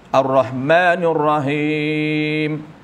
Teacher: Dia tebalkan huruf ra sehingga tebalkan sekali huruf ha, bertukar apabila sebutan tebal huruf ha bertukar jadi ha. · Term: menukarkan makhraj